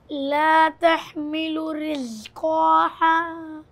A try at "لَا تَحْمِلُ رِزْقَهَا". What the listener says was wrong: آپ کھینچ رہے ہو قاف پہ حرکت کو جلدی پڑھیں گے ہم نے پڑھا ہے اس کے پہلے پھر سے پڑھیے